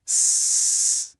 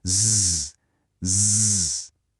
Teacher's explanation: o S é surdo e o Z é sonoro.